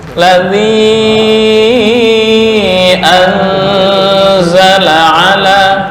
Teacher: An dengungnya kurang lama.